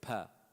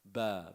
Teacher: P is like almost same makhraj as ba, right? Ba, but there's more air coming out.